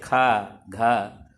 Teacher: और यही कारण है कि हा मिलाकर के ही जो कमजोर ध्वनि वाले स्वर हैं जिनको अल्प प्राण कहा जाता है उनको महाप्राण बनाया जाता है। जो भी महाप्राण ध्वनियाँ हैं जैसे खा, घा, उनमें उसके पूर्व जो अल्प प्राण ध्वनियाँ हैं, अल्प प्राण व्यंजन हैं, उसमें हा मिलाया जाता है।